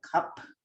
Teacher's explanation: where you have like unaspirated K at the beginning and an aspirated P at the end